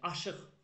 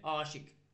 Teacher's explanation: Sonu q hərfi ilə bitən sözlərimizə mən əgər heç bir şəkilsi, yaxud da heç bir söz artırmasaq, sondakı q'lar, sondakı q samiti, q'lar kar tələffüz olunacaq.